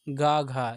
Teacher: ये कंठ व्यंजन के अंतर्गत आते हैं